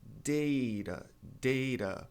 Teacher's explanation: T ladeado por vogal. A sílaba tônica é o DA